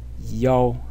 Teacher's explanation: the pronunciation yo in the first tone